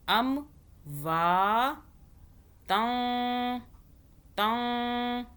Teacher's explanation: نون کو ہم چھپائیں گے, زبان تالو سے نہیں لگانی, اخفا کرنا ہے 2 سیکنڈ کے لیے, منہ میں رکھنا ہے, نون کو چھپانا ہے.